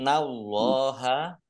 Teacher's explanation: Innallaha nun tasdid dibaca gunnah atau mendengung, ditahan 2 harokat.